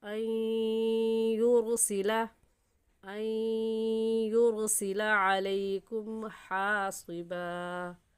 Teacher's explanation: کیونکہ اس نون ساکن کے بعد حروف یرملون جو کہ 6 ہے، یا را میم لام واو نون، یرملون ان میں سے یا آ گیا ہے، اس وجہ سے اس نون ساکن پر غنہ ہوگا ادغام کے ساتھ